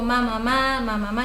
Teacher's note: consonante vocal consonante u otra reacción que lo más fácil es las consonantes que juntan los labios porque no hay intervención de elevar la lengua